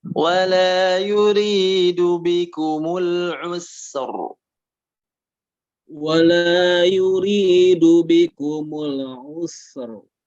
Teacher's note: roknya sudah tebal, cuman sinnya jangan ikut tebal